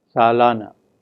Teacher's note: In the word salana, the la syllable is stressed, and we find that it is longer in duration than the first syllable, such as sa, salana.